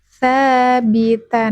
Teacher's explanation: Ta punggung ujung lidah menyentuh pangkal gigi seri atas satu makhraj dengan huruf da dan th tsabita. · Sabita, huruf ta tidak boleh keluar ya, lidahnya tidak boleh keluar. Ta, punggung ujung lidah menyentuh pangkal gigi seri atas.